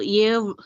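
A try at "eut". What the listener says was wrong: ఏవుట్ కాదు ఎవుట్ ఎవుట్ ఈ వచ్చినప్పుడు ఏ అంతే, పెద్ద ఏ ఉండదు, పెద్ద ఏ ఉండదు, ఉత్త ఏ చిన్న ఏ ఈ వచ్చినప్పుడు చిన్న ఏ ఉంటది, అది గుర్తు పెట్టుకో అంతే.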